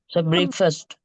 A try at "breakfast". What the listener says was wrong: Okay, so yeah, the pronunciation is breakfast. Yeah, don't say break fast. That's not correct, okay?